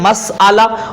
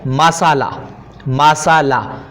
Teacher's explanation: بعض اوقات اس کو وہ کہہ دیتے ہیں مسالہ، مسالہ، یعنی حمزے کی حرکت سین کو دے دی اور حمزہ بالکل ختم کر دیا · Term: تخفیف